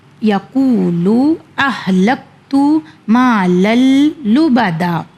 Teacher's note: میں نے دال کی سائن کو نہیں پڑھا ہے، دونوں زبر کو نہیں ادا کیا ہے